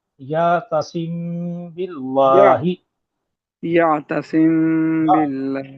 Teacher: मीम साकना के बाद बा आए तो मीम में गुन्ना करते हुए होंठों की नरमी से अदा करेंगे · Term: इक्फा